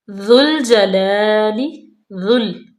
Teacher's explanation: ذا کو لام میں ملائیں گے اور نرمی سے اور باریکی سے پڑھیں گے، بالکل موٹا نہیں کریں گے